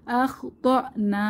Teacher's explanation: আলিফ টানবো ইন্নাসিনা আও আখতানা আখতা এখানে হামজায় সিফাতে শাদিদা বা হামজায়ের উপরে সাকিন এসেছে তাহলে একটু ধাক্কা দিয়ে পড়বো। আখতানা, না তে এক আলিফ টেনে, জবরের বাম পাশে খালি আলিফ,